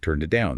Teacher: The it gets swallowed up in the middle.